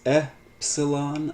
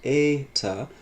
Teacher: First, please pay close attention to the fact that there are two E vowels and two O vowels in Greek. One is short, epsilon, the other is long, eta, and the very names of these letters, epsilon and eta, reflect the difference in this pronunciation, e versus a.